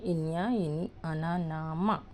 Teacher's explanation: వీటిని అనునాసికాలు అంటారు. అంటే ముక్కుతో పలుకుతాం.